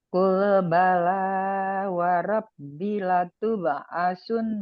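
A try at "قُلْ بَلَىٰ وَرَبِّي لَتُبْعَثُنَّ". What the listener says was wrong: Rabbi, binya kurang panjang mungkin.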